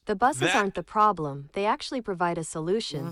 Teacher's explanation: they put problem and solution in all caps, and it caused it to emphasize those 2 words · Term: emphasis